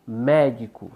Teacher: penúltima paroxítona e exemplo de proparoxítona médico são três sílabas médico sílaba tônica é a antepenúltima